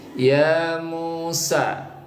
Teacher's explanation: hukum bacanya adalah mad tabi'i, dipanjangkan sebanyak 2 ketuk ya. Ya Musa, ya mu dan sa itu dipanjangkan 2 ketuk, namanya mad tabi'i.